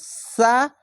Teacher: এটি হচ্ছে নিচের তালুর সঙ্গে বা নিচের দাঁতের সঙ্গে লেগে সিসকি মেরে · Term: সিন